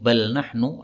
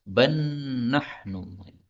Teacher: lam ketemu nun, ini boleh idgham menjadi ban nahnu.